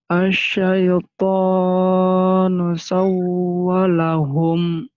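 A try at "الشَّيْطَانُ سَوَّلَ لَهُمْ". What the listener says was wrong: Lamnya ada dua. Lamnya ada dua. Wawunya, sanya dileburkan ke wawu. Karena di wawu itu ada tasydid. Sawwa. Sawwalahum.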